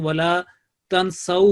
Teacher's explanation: जब हम स्टॉप करेंगे तो वला तनसऊ हो जाएगा, वाव के ऊपर सुकून आ जाएगी, क्योंकि हमने इसको वक्फ किया।